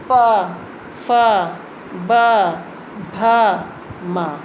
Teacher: अब जो प वर्ग है वो ओठ से बोला जाता है